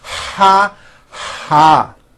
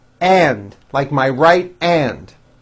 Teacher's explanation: When an H is at the beginning of a word, it is pronounced with a strong, loud airstream. You should first breathe in and then loudly out. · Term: H sounds